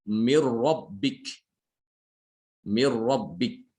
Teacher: Jadi nunnya itu sama sekali hilang, tidak ada bekas. Ya, masuk ke dalam ro. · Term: idgham bila gunnah